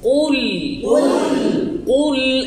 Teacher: লাম পাতলা কফ মোটা লামে যখন প্রবেশ করলাম তখন এটাকে পাতলা করে দিতে হবে